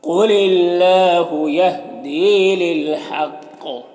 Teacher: قاف حروف مستعلیہ میں سے پر پڑھیں گے، یہاں پر اللہ کے لام سے پہلے لام کے نیچے زیر ہے تو اللہ کے لام کو باریک پڑھیں گے، کھڑا زبر ہے، ایک الف کے برابر کھینچیں گے، یہاں پر یا مدہ ایک الف کے برابر کھینچیں گے، یہاں پر قاف حروف مستعلیہ میں سے پر پڑھیں گے اور وقف کی صورت میں قلقلہ ہوگا تو اس طرح سے پڑھیں گے۔